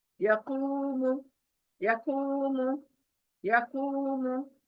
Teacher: यकूम, कू खींचना है, वाव मद्दा।